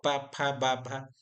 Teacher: तो जैसे अगर हम बोल के भी देखें तो हमें पता चलेगा, सिर्फ पा बोलेंगे तो हमारे दोनों ओठ जो है आपस में सट जाते हैं ना। जब पा बोल के देखिए तो पा फा बा भा, तो यहाँ क्या होगा, दोनों ओठ क्या हो जाते हैं, सट जाते हैं। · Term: ओष्ठ